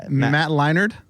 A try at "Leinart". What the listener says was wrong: Leinart? You're saying a D. Well, you're saying Matt Leinart. No, Matt Leinart.